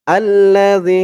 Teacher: জালের উচ্চারণটা একদম নরম পাতলা হবে জিহ্বার মাথা উপরের দাঁতের মাথার সাথে লাগবে